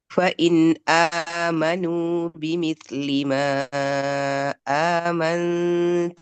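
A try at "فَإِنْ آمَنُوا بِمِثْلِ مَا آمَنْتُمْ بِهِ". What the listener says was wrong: Nah, tambahkan bnya amantum bih.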